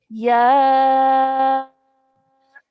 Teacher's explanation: Madulkabir means that we have to stretch the sound of ya for 4 counts. Usually we would do it for 2 counts because of the alif mad, but because there is a Madulkabir on top of that, our sound now stretches for even longer for about 4 to 6 counts.